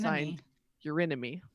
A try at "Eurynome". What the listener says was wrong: And that's Eurynomy spelled EURYNOME, not your enemy.